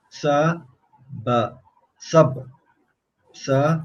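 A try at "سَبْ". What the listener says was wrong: don't read it as ba because there's no haraka on it, and we're not giving its name either.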